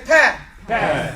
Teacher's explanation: you said the same makhraj of the ba, but you didn't do it with shidda, right? So you make a P sound.